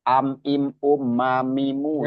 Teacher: mim itu kan mim itu berasal dari kedua bibir.